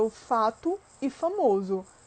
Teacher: Se ele não tiver nenhum tipo de acentuação, esse O no final de uma palavra ele vai assumir o som de U